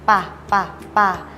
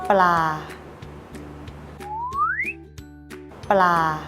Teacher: ให้ริมฝีปากบนและล่างปิดชิดกันพร้อมเปล่งเสียงปะปะปะแล้วพูดคำว่าปลา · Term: ปอปลา